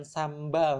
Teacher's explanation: karena m&b ini dua-duanya sama-sama di bilabial